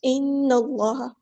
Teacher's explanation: نون پہ غنہ زمانی ہو رہا ہے، الف کے برابر رکیں گے